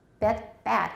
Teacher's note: whisper them ash should be much lower